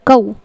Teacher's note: یہاں پر واو لین ہوگا، نرمی کے ساتھ ادا ہوگا